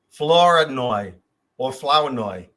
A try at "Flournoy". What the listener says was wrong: You're very close. It's Flanoy. Flanoy. I'm like, take the R out, dude. And the O and the U and just put an A in there. Flanoy. That's how it's pronounced.